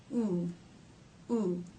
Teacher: the back part of the tongue stretches up towards the soft pallet · To make this sound, the back part of the tongue stretches up towards the soft palate. Oo, oo. The front part of the tongue remains down, lightly touching or just behind the bottom front teeth. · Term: O as in Buu vowel, oo as in boo